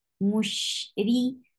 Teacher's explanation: ra is light here because whenever ra is with kasra, it is light. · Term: light ra